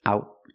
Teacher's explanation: the T in out is a stop T. Put your tongue up and stop the air. Out. Link to the next word.